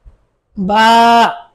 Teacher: দুই ঠোঁটের ভিজা জায়গা থেকে আদায় হবে